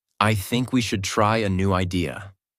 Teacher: Voice goes down at the end. This is called falling intonation